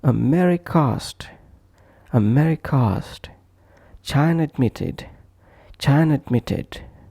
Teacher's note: when both sounds are a as in America asked or China admitted we will just push one onto other